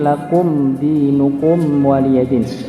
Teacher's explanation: Cuma sedikit dia, mim ini punya sifat gunnah, punya sifat tawassut. Tawassut ini sedikit mengalir sedikit saja, nggih. Kalau gunnah ada dengung begitu, guys.